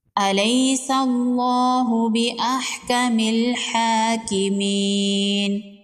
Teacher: الیس اللہ باحکم الحاکمین، یا لین ہے، اس کو نرمی سے پڑھیں گے اور جلدی پڑھیں گے۔ لفظ اللہ سے پہلے زبر ہے، لفظ اللہ کو پر پڑھیں گے۔ کھڑی زبر ہے، ایک الف کے برابر کھینچ کے پڑھیں گے، یا مدہ ہے، ایک الف کے برابر کھینچ کے پڑھیں گے، وقف کی صورت میں نون کو ساکن کر دیں گے۔